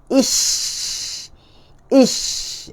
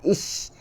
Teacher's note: Sebaran bunyi huruf shin. Dan makhrajnya menyebabkan ia melanggar bahagian dalam gigi atas dan bawah. Ish. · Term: tafashi